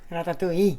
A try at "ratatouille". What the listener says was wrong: In French, we say E. Yes, they say Ratatouille because they speak English, but it's a French word, E.